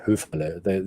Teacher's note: But up north, they would probably call it Höferle. You wouldn't hear the R.